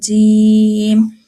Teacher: زبان کی جو درمیانی حصہ ہے اوپر تالوں کا درمیانی حصے سے لگے تو یہ جیم